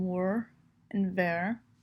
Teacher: he also drops the E sound off of the ends of words, such as worry and very, making them wor and ver.